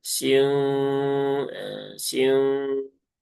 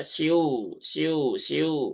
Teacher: Jadi kalau siung siung nah di sini kerasa ada getarannya. Nah, jadi separuh masuk ke rongga hidung, separuhnya lagi masuk ke rongga mulut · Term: gunah